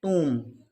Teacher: But TOMB is pronounced as tomb. O gives the sound of oo. We can say deep vowel, long sound of vowel. But B is silent here.